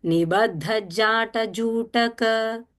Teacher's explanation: when you are saying Nibaddha, ba is simple, dha is Mahaprana.